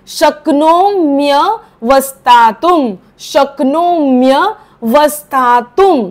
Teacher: त वरचा अनुस्वार त्याचा उच्चार म करायचा कारण पुढे भ आहे